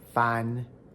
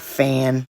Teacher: For a final N in English, the overall tongue body sits slightly lower and further back in the mouth, giving English nasals slightly deeper resonance. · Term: English articulatory setting